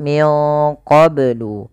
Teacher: Caranya nunnya samarkan ke ko, ya, wa kanu min qablu yastaftihun. Kemudian melafal qablu ini banyak harus dipantulkan karena ia ada bacaan qalqalah. Maka bacanya adalah min qablu.